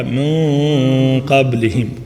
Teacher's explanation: جب نون ساکن کے بعد کوئی حروف استعلاء میں سے ہو تو پھر ہم موٹا اخفا کریں گے